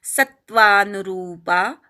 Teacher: स वर आघात घ्यायचा रु दीर्घ आहे